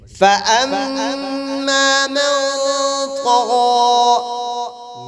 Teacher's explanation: نون ساکن پہ اخفاء کے ساتھ غنہ ہوگا.